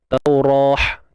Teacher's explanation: Jadi bila kita berhenti, saya rasa semua maklum, memang kita akan berhenti dengan bunyi huruf ha. Ha simple bukan ha pedas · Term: ta marbutah